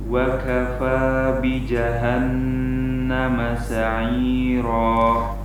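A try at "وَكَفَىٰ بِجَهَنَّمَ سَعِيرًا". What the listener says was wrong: Baik, untuk antum jimnya diusahakan untuk tidak mengeluarkan hembusan angin yang terlalu banyak. Ja, bukan seperti itu, tapi ja. Jadi ketika menekan pada makhrajnya, yaitu tengah lidah bertemu dengan langit-langit keras, ini ketika menekan kemudian setelah itu menjauh dari makhrajnya, pas menjauh itu harus dihati-hati.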